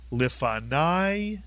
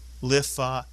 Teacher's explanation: at the end of a word, kamatz yud is I, as in the word lifanai. But if the kamatz yud comes inside a word, it remains an ah sound, lifanav. One more time, lifanai, lifanav.